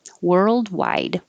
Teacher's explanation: You don't hear any of the D's. Your tongue goes to the D position.